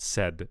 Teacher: I want the voicing on that final consonant. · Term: devoiced stop